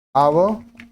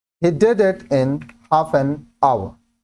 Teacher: hour starts with a silent H and a vowel sound, so article N is used.